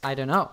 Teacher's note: Sometimes when we speak fast, instead of fully articulating the D sound in don't, we use what's called a flap D, which is a quicker version of it